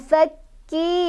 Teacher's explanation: Fakki, ditekan kafnya ada tasydid.